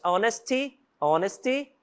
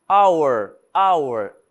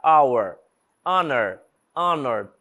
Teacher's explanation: todas essas aqui por exemplo nenhuma delas tem som de R o h por exemplo ele não é pronunciado não tem som